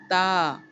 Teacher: زبان کی نوک سامنے کے دو دانتوں کی جڑوں سے جا کے ملتی ہے تو ادا ہوتا ہے تا